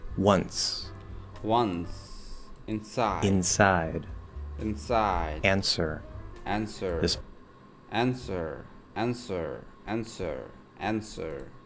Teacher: We do need to hear the N come through the nose a little bit